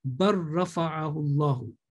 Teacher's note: after lam sakin, when the next letter is ra, mutaharrik, then lam will be ignored altogether. And the previous mutaharrik will be joined, bar rafa'ahu Allahu.